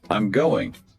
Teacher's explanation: with that voice going up at the end, turns it into a question